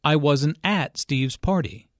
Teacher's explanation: negative question to show his surprise i wasn't at steve's party notice that the emphasis here is on at although prepositions normally have weak stress